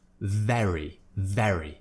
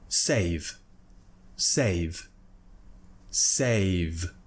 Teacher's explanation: when I say very I'm really pushing the sound out I'm voicing it there's a strong voiced consonant sound